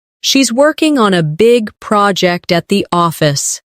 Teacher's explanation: Stress, working, big, project, and office.